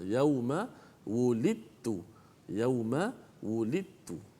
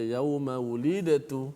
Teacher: Dan selepas huruf dal itu ada huruf ta yang bersabdu, yang menandakan bahawa bacaan dal yang mati itu dimasukkan secara total ke dalam huruf ta. Maknanya dari sudut bacaan, dari sudut sebutan, dal dah tak ada dah. Dah dimasuk dalam ta siap-siap dah. Yauma wulidtu. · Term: Idgham